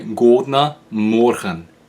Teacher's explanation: Back 1,000 years, it was like a R sound. It was a velar voiced fricative G